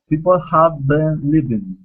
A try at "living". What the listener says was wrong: Li. Instead of leaving, living. People have been living.